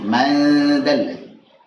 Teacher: hati-hati jangan sampai jadi idgham gitu. Jangan sampai nempel. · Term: ikhfa